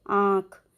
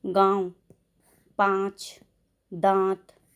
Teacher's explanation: इसमें हमारे गले पर भी बल पड़ रहा है और नाक से भी आवाज़ आ रही है। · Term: अनुनासिक